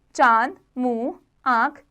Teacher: इसका उच्चारण नाक और मुंह दोनों से होता है इसको चंद्र बिंदु भी कहते हैं इसका चिन्ह ये होता है · अनुनासिक, इसका उच्चारण नाक और मुंह दोनों से होता है।